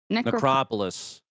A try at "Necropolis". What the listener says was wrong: Did you say necropolis? You put the wrong emphasis on the wrong syllable.